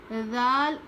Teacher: यानी जुबान की नोक को ऊपर के दांत पर लगाकर पढ़ेंगे। हल्का पढ़ेंगे।